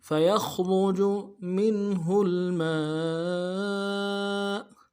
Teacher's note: تو لما یشقق فیخرج فا کو نون سے ادا کریں گے، یا کو خا کے ساتھ ملانا ہے، خا کو موٹا کریں گے، را کو موٹا کریں گے ، جیم کو بھی نرم سے ادا کریں گے، فَيَخْرُجُ مِنْهُ